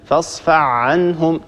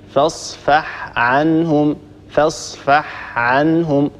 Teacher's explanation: فإذا مر معنا مثلا قوله تعالى فاصفح عنهم، البعض هنا لا يبين الحاء، يقول هكذا فاصفع عنهم، طبعا هذا أسهل فيدغم الحاء في العين، هذا خطأ، ننطق الحاء وننطق بعدها العين، فاصفح عنهم فاصفح عنهم، ولا نقول فاصفع عنهم، ننتبه لهذا الأمر، لا بد من بيان الحاء إذا جاورت حرف العين، ننتبه لهذا الخطأ الشائع.